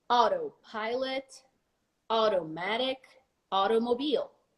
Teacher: the T becomes an R when you pronounce it more an American uh style and a little faster